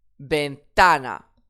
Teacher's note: j'accentue sur l'avant-dernière syllabe